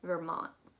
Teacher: You're not actually going to pronounce that T at all